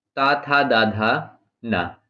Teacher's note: ये दंत से बोले जाते हैं, इनको दंत्य वर्ण कहते हैं।